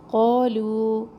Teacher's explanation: لو مد ہے یہاں پر مد منفصل، اس کو بھی ہم نے 3 الف کے برابر لمبا کرنا ہے. 3 بھی، 2 بھی اور 1 بھی، تینوں طریقے جائز ہیں لیکن یہاں پر سیکھنے کے لیے آپ اس کو 3 الف کے برابر لمبا کریں.